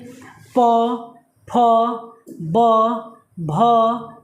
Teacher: जिन व्यंजनों को उच्चारण में ओठ का प्रयोग किया जाता है, इसलिए इसे ओष्ठ्य व्यंजन कहते हैं।